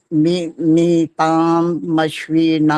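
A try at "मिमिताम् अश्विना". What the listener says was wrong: मिमिताम नहीं आई, मिमिता है बस। ताम नहीं है, मिमिता मश्विना इकट्ठा बोलना होता है। ताम बोल दिया तो मां हलंत हो जाएगा ये।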